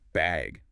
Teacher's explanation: do you need a bag or even just bag with a rising tone